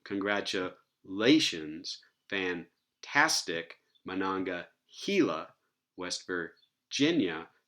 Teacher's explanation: These all have stress on the second to last syllable